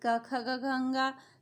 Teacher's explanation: कवर्ग के उच्चारण स्थान कंठ है